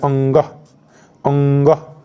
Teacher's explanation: अंग न से हो रहा है, नाक से हो रहा है